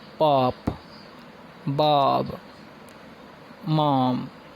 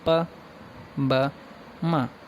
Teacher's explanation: Bilabial sounds ऐसे sounds होते हैं जो कि तब बनते हैं जब हमारे दो लिप्स होते हैं वो एक दूसरे के क्लोज आते हैं।